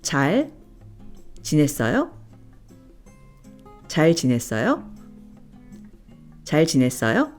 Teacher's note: Repeat after me to ask the question, which is with the rising intonation.